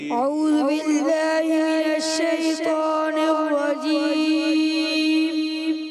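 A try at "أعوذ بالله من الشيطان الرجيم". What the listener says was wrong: اعوذ، ذال کلیئر کر کے پھر دوبارہ پڑھیں۔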